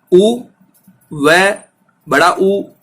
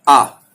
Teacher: उ, व, उ तीनों तो ओष्ठ वर्ण है, लेकिन आ ये ओष्ठ वर्ण नहीं है, ये कंठ का वर्ण है